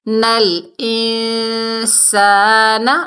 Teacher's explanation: حمزہ کو نون ساکن سے ملائیں گے، اور نون ساکن کے بعد حروف اقفا کے 15 حروفوں میں سے سین آ رہا ہے تو یہاں پر اقفا ہوگا۔